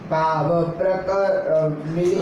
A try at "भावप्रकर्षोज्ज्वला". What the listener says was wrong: साथ में बोलोगे तभी भाव, वरना भाव का प्रकर्ष हो जाएगा।